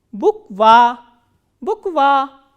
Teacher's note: So, again there are 2 vowels, u and a, and this a is stressed and u is unstressed.